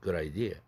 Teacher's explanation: 이 한 단어 내에서 아이디어에서 뒤에 액센트가 있지 않습니까?